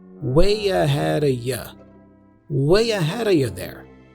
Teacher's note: the D for ahead has a flap sound which connects with the preposition of which then is reduced to a schwas sound uh so we